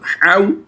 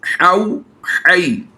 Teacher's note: हुरूफ लीन को बग़ैर खींचे बग़ैर झटका दिए हरकत की तरह नरमी से पढ़ते हैं